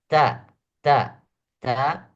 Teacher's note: ta juga ada desisnya kecil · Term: huruf Hamas